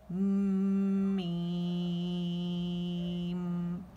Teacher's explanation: यहाँ पे मीम में गुन्ना किया मैंने, ठीक है। और फिर 6 काउंट से खींचे